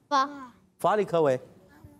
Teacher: फा की अदायगी ऊपर के दांतों के किनारे और नीचे वाले होंठ के तर हिस्से से अदा होता है